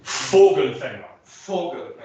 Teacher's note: On your bilabial fricative, on your diction feature, on your v, and sorry, not bilabial, but your linguodental, labiodental fricatives, your f and your v, can you get a little more closure to them?